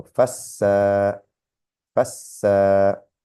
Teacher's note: So here we have the a and the alif, the a sound with the alif, so we know we have to elongate this one. But we have mushadda, so it means there's 2 sins and then elongate the sound.